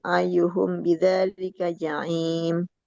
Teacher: Mim ketemu ba, ikhfa syafawi, tahan.